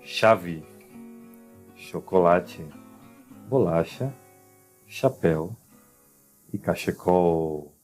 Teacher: Em espanhol, essa pronúncia será ch. Em português será sh. Soplada, soprado